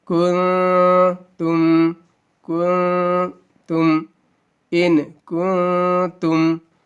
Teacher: ناک میں آواز کو رکھنے کو گنہ کہتے ہیں. تھوڑی دیر رکھنا ہے